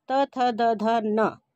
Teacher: इनको बोलते समय त, थ, द, ध, न हमारी जीभ जो है दांतों से टकराती है, इसलिए इसको दंतव्य व्यंजन कहा गया है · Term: दंत व्यंजन